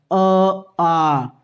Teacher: जो हमारा दोनों आ हैं, अ और आ, यानी छोटा आ बड़ा आ, वो हमारे कंठ से बोले जाते हैं